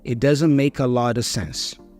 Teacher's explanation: The is a schwa sound. The T for lot is a flap T, which then joins with the preposition of. But again, the preposition of is reduced to another schwa sound.